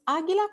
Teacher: Pues águila comienza con una A tónica. Esto significa que esta vocal tiene el estrés articulatorio más fuerte en la palabra.